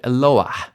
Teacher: It's actually a roughly breathed hey or mapik hey. You can hear it at the end of the word. So this isn't Eloah, this is Eloah.